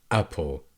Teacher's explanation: The glottal stop, in shorter terms, it is the first sound when you say as in apple.